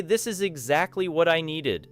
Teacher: If you say, This is exactly what I needed, stressing exactly communicates relief or satisfaction